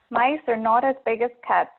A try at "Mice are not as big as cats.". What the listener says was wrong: Great. Okay, that one was easy for you. Good job.